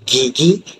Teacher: Kemudian yang terakhir bagi letusan bersuara ialah letusan langit lembut yang mengeluarkan bunyi ge